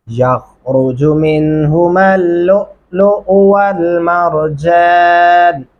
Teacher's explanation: यख़रुजु, खा को मोटा और पुर करके पढ़ेंगे